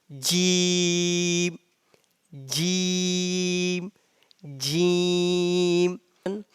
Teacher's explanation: The sound of Jim comes from the middle of the tongue and middle of the palate.